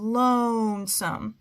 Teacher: the first syllable has the long o sound